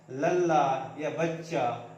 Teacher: ये एक ही जो व्यंजन है वो दो बार प्रयोग होता है, एक बार आधा एक बार पूरा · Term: द्वैत व्यंजन